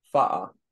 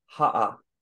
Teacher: there's a glottal stop that comes from K.